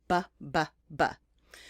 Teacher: make in the same place of your mouth as the ba the only difference is you use your voice when you make the ba